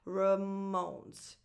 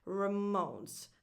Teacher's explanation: So the stress goes on the second syllable of this name, mo, on that O. So the first vowel, that A, is not defined at all. It's just a schwa.